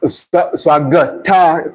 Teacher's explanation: It's like a G has replaced the K. That is articulation effects in Tyap.